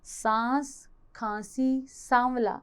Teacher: जब हम इसका उच्चारण करते हैं तो वायु नासिका तथा मुख दोनों से बाहर आती है, उसे अनुनासिक कहते हैं।